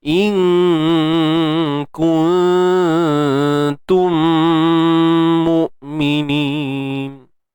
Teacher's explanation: Ikhfa' kan, sembunyikan nun mati tu.